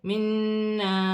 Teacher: با مشدد ہے، اسے بھی جماؤں کے ساتھ ادا کیا جائے گا۔ نون مشدد میں غنہ ہوگا